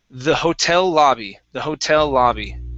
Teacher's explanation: this word is pronounced Hotel the stress is at the end of the word